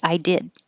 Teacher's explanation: By itself, you don't hear the final D. I did. But if you said I did it, now the D connects to the it.